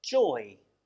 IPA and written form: ʤɔɪ (joy)